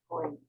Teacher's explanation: the last G completely vanished